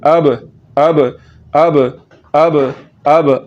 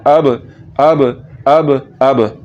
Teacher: कलकला करने का तरीका ये है कि आपने यहाँ पर पढ़ते हुए हिलाकर पढ़ना है और इसको झटके के साथ पढ़ना है